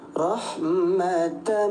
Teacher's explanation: Jadi bunyi tanwin kita leburkan ke huruf mim bertasydid yang tadinya rahmatan mi menjadi rahmat langsung tem temp tempel ke tasydid. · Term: idgham bighunah